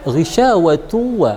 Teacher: Di sana dia syakalnya dhammatain berhadapan dengan huruf waw, maka ghisyawatu wa kita tekan selama 2 harakat di sana karena hukumnya adalah idgham bi gunnah